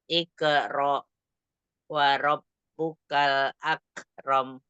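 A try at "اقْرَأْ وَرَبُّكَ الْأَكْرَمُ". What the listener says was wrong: Nah, ini aja yang, untuk, qalqalahnya yang qa sukun itu masih pakai ke gitu.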